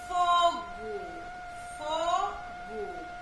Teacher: Tem som de U, mas é a letrinha O, que está no final